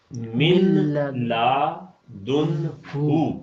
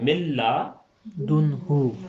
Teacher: نون بالکل ہی ختم ہو جائے گا · تو یہاں چونکہ ادغام ہو گیا ہے نون کا لام کے اندر، نون کو لام میں داخل کر دیا ہے، تو اس لیے جب ہم اسے پڑھیں گے تو یہ پڑھنے میں آئے گا ملا دن ہو.